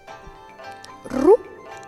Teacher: we may want to say it differently, almost like an L, between an L and an R